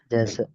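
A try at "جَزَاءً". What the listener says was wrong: Jazaan ada tanwinnya.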